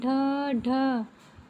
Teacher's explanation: जिन व्यंजनों के उच्चारण में जीभ ऊपर उठकर झटके के साथ नीचे आए। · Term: उत्क्षिप्त व्यंजन